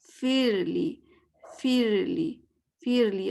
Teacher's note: اوپر کے دانت نیچے والے لپ سے، اس کو آپ ٹچ اس طرح کریں کہ ہوا کی آواز ہے، اس کو ہمس کہتے ہیں